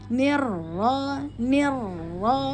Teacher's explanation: langsung masuk ke ro bertasdid fathah, maka tebal. Ro tafkhim.